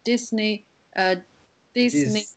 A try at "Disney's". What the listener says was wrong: Disney's because there's apostrophe s. Disney's.